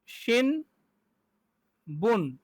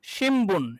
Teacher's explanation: Normally হওয়ার কথা ছিল হচ্ছে শিন বুন, কিন্তু আসলে কি হবে? উচ্চারণটা হবে শিমবুন।